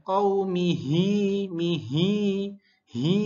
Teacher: Hi-nya harus jelas, jangan seperti alif. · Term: huruf H